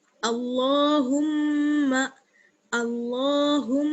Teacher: حمزہ لام زبر اللام کھڑا زبر لا اللہ. ہا کو میم سے ملائیں گے اور غنہ کریں گے، ہا میم پیش ہم، میم زبر ما ہم.